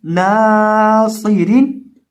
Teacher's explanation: یہاں ہم نون کو کھینچیں گے کیونکہ اس کے ساتھ الف مدہ ہے، ایک الف کے برابر اس کو لمبا کر کے پڑھیں گے، اور صاد کو موٹا بھی کریں گے، اور اس کے اندر سیٹی کی آواز بھی پیدا کریں گے۔